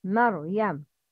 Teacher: Ra with sukun after fatha is always mufakhama. With sukun after fatha, example, maryam, it's mar, ar, not mer, mer, no, maryam.